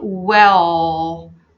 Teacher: The dark L, guys, it's a very strong vibrational sound coming from your throat. And again, I'm not bringing the tip of my tongue to the roof of the mouth unless I reach the end of the sound.